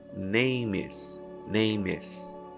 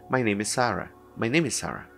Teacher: Então, se eu junto name com is, fica names, names. Eu junto uma coisa com a outra.